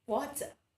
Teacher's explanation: One of the highlights of this accent in England is the pronunciation of the word that ends with letter R also. It is pronounced as ah. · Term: British accent